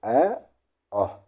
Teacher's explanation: कंठ स्वर होते हैं हमारे ए और आ। बोल के देखो ए आ, तो हमारे कंठ से आवाज निकलती है।